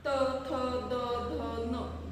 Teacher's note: जीभ ही दाताला स्पर्श करते त्याच्यामुळे याला काय म्हटलं जातं, तर दंत्या वर व्यंजन